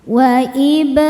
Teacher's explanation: Huruf ro dibaca secara tafkhim karena berharakat di atas yaitu harakat fathah. Cara bacanya ditebalkan.